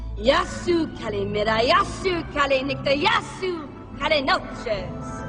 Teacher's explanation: You see, you just put the emphasis on the first syllable.